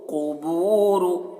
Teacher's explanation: कौफ को पुर पढ़ना है और रॉ को भी